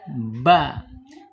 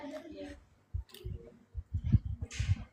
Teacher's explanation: Ba ini ba terkatupnya dua ee bibir atas dan bawah ya. Jadi terkatup ba. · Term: asyafatain